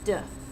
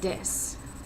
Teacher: turning the sound TH into a D, duh, just a really kind of slight D. So when he would say this, he ultimately sounded like he was saying dis.